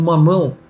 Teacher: mamão, que vai dar o ditongo crescente e nasal